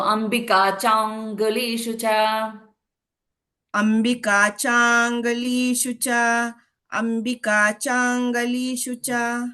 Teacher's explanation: So it is Changulishu, that Chang, that you have to hold a little bit in on the ng sound. So cha becomes a little longer and ng sound will be with a little bit of hold.